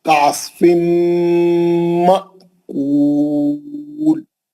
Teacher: तनवीन का इदगाम माल गुन्ना हर्फ मीम है